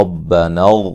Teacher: را کو موٹا ادا کریں گے،